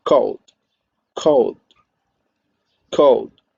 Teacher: And also, this, according to the manner of articulation, this sound, this sound is stop plosive because the air is held for a while and then is released in a plosive manner.